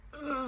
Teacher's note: We used the false vocal fold.